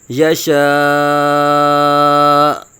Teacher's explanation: اینڈ پہ جھٹکا ہلکا سا دے دیں گے۔